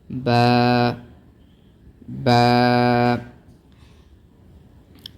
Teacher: با کو بالکل نرمی کے ساتھ دونوں ہونٹوں سے ادا ہوتا ہے، دونوں ہونٹوں کے ملانے سے، لیکن دونوں ہونٹوں کے ملانے کے بعد منہ کو ذرا کھولنا پڑتا ہے تاکہ خلا میں آواز بلند ہو۔ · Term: حرف با